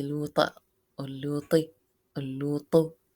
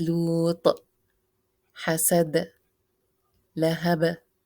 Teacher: It has to be vowelless with a shake or turbulence or qalqala.